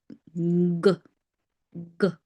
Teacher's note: For D, your tongue goes up and you say D. For G, the middle part of your tongue touches your upper part of the mouth. Okay. G, G.